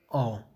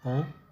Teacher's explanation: ਅੱਗੇ ਹੈ ਆੜੇ ਨੂੰ ਕਨੌੜਾ, ਔ, ਠੀਕ ਹੈ, ਔ, ਇਹ ਪਿਛਲੇਰਾ ਹੈ, ਨੀਵਾਂ, ਗੁਲਾਈਦਾਰ ਹੈ, ਦੀਰਘ ਅਤੇ ਬਾਕੀ ਸਾਰੇ ਹੈ